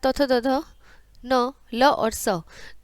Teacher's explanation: दांत और जीभ, इसे बोलते हैं दंत्य